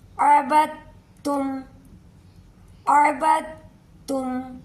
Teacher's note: جب بھی ساکن والا حروف آ جائے گا تو اس حروف کو ہم نہیں پڑھیں گے، اس کو ساکن کر دیں گے، با کو ڈائریکٹ تا کے ساتھ ملائیں گے